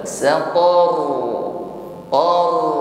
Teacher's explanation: karena di sini sebelum ro ada fathah, maka menjadi tafkhim bunyinya, getarannya tebal.